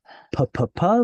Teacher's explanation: Buzz your lips together much like P and you add an h and it makes it breathy